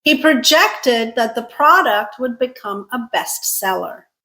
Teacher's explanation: Second syllable stressed is a verb